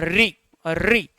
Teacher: देखो री का हम उच्चारण कर रहे हैं तो जीवा का हमारा आगे वाला भाग है वही क्या हो रहा है साहब, सक्रिय हो रहा है। तो री का उच्चारण करते जीवा का आगे वाला भाग सक्रिय हुआ तो ये क्या हो जाएगा आपका, ये हो जाएगा हमारा अग्रस्वर। · ऋ का उच्चारण करते जीवा का आगे वाला भाग सक्रिय हुआ